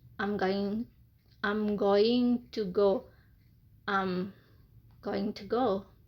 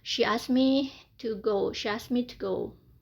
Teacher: Jadi weak formnya to itu adalah te.